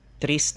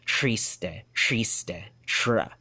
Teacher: They're gonna have that retroflex, the that American R, that American retroflexed R for that rhotic sound. But since Chabacano substrate language is Spanish, it's gonna originally be a trilled r sound